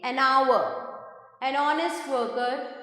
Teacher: द indefinite article N is used with words that begin with the consonant H, but the H is silent and the word begins with a vowel sound